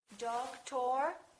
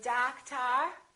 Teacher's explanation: we stress the first syllable we reduce the second